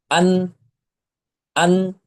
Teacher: জিহবার আগা ওপরের তালুর সাথে লাগিয়ে বা তার বরাবর উপরে তালুর সাথে লাগিয়ে নুন অক্ষরটি উচ্চারণ করতে হয়। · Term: মাখরাজ